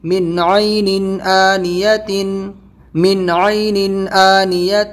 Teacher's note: یہاں پہ نون ساکن کے بعد میں عین حلقی لیٹر ہے، تنوین کے بعد میں حمزہ حلقی لیٹر ہے، یہاں پہ نون کو بھی ظاہر کریں گے اور تنوین کو بھی